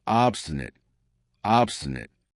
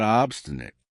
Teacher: notice how I pronounce it with schwa at the end